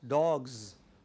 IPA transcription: dogz